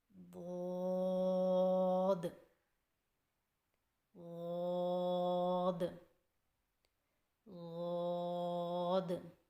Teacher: ضاد کی ادائیگی میں زبان کے پچھلے حصے کو تالو کی طرف بلند کرتے ہوئے زبان کے موٹے کنارے کو اوپر والی داڑھوں کی جڑ پر آہستہ آہستہ نرمی سے لگا کر خوب موٹی اور دراز آواز میں پڑھیں